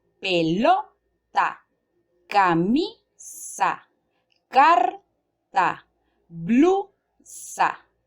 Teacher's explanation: La sílaba tónica en estas palabras se encuentran en la penúltima sílaba. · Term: graves